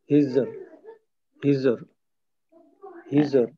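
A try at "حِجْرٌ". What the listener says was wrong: জিমের জিমের মাখাসটা মনে আছে জিব্বার মাখানো উপরের তালু দাঁতের সঙ্গে লাগা দাঁতের সঙ্গে লাগানো যাবে না হিজর না হিজর না তাহলে তো হিজর হয়ে গেল আর কি এখানে হিজর হিজর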